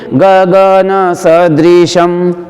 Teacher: बलाघात नहीं करेंगे स के ऊपर, क्योंकि द और री ऋषि वाला संयुक्त अक्षर नहीं है, द व्यंजन है और री ऋषि वाला स्वर है, इसलिए यहाँ पर बलाघात नहीं होगा।